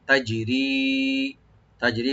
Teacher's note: জিমে একটু হালকা কলকলা করব, রি একালে টানবেন